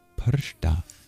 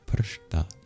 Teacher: But the R, the S, and the T are all retroflex. They have a dot under it in the IAST.